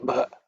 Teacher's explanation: Ub plus a is bha with a lot of air.